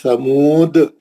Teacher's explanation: خلخلہ کبرا کو تھوڑا بھاری آواز سے پڑھنا تھوڑا اسٹرانگلی پڑھنا